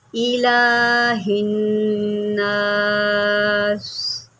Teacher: یعنی کہ سین جو ہے حروف صفیریہ میں سے ہے، آپ جو ہے میری سیٹی کو واضح دیکھ رہے ہوں گے